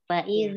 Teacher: ujung lidah bertemu dengan ujung gigi sisi depan. Fa iza ya. Jadi seperti tergigit gitu. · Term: huruf dzalnya